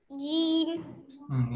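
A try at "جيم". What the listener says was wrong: लंबा कीजिए थोड़ा।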